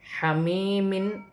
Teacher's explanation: یا ساکن سے پہلے زیر ہے تو یا مدہ بن رہی ہے۔ حمیمن، دو زیر کی تنوین میں غنہ نہیں ہوگا کیونکہ آگے حمزہ ہے، حمزہ حروف حلقی میں سے ہے، تنوین کے بعد جب بھی حروف حلقی میں سے کوئی حرف آئے گا تو وہاں تنوین میں غنہ نہیں ہوگا، یہاں دو زیر کی تنوین وقف کی صورت میں گر جائے گی اور نون ساکن ہو جائے گی۔